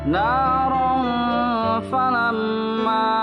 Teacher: fathah tain bertemu dengan huruf fa, maka dibacanya menjadi samar sambil ditahan 2 harkat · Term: ikhfa